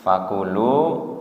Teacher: kunya pendek, lunya yang panjang